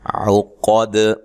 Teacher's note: قاف کو موٹا ادا کرنا ہے، دال پہ قلقلہ کرنا ہے وقف کی صورت میں